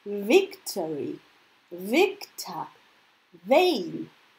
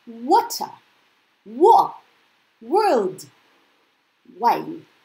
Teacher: you don't touch anything with your teeth so it's just the lip movement you see and you open it very very fast